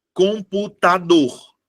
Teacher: a minha sílaba tônica é a última